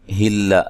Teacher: لام کو باریک پڑھنا ہے، لمبا نہیں کرنا. ذی یا مدہ ہے.